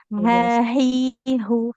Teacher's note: Kalau huruf H yang sering kita bilang H besar itu ya makhrajnya dipangkal tenggorokan ya.